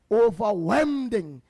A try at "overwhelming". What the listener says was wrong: It's overwhelming. Overwhelming. Not wending. Overwhelming.